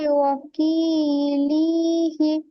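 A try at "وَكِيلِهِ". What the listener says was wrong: লিটা টান হয়ে যাচ্ছে, হাটা টান হচ্ছে না রিডিং লি বলে টান হয়ে যাচ্ছে। লি, লামসের লি একটুও টান হবে না, ওয়াকিলি।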